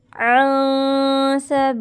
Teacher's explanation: ये नून साकिन के बाद सीन आ रहा है, यहाँ पे इक्फ़ा का गुन्ना करेंगे। अन सबीलिल्लाहि, अल्लाह के लाम को यहाँ पे बारीक पढ़ेंगे।